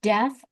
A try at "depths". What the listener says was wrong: No, there's a P.